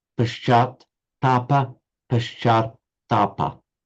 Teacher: you've got to get the long a and also the double t